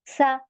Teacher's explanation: सा हमारा बहुत लाइट लेटर है इसमें आप सीटी नहीं निकाल सकती